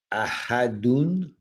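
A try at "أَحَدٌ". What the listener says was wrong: Yes.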